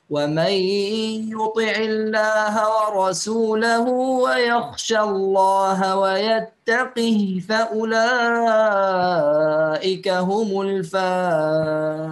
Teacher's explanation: يقرأ بالإسكان، تمام، يكسر القاف ويسكن الهاء